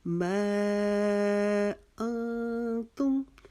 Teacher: انتم میں ہم نے ایک الف کے جتنا اخفا کیا